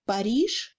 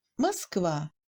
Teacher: Le A dans le mot Paris est plus court que le A dans le mot Moskva parce qu'il n'est pas accentué.